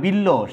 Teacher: তারপরে বিল্ল, সেখানেও কিন্তু বয়ের উচ্চারণ নাই, কিন্তু লটা দুইবার উচ্চারিত হচ্ছে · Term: দ্বিত্ব উচ্চারণ